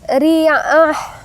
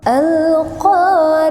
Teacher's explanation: benarnya teman-teman baca Ain ya di tengah-tengah tenggrokan kemudian ketemu dengan ta marbutah yang berubah menjadi ha ya Ha yang berada di bawah tenggrokan gitu ya mengarah ke dada alq ada ya terasa di dada sedikit nafas gitu ya alqah